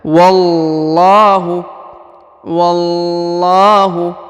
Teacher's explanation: huruf la dipanjangkan 2 harokat ya